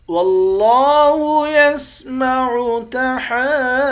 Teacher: لفظ اللہ کے لام کو موٹا پڑھیں گے، لفظ اللہ کے لام کے اوپر کھڑا زبر ہے، اس کو ایک الف کی مقدار کھینچیں گے